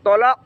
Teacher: এখানে হবে তলাক, তোয়া আর কফ, কফ কলকলা, তলাক।